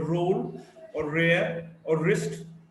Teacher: R is a voiced alveolar approximant.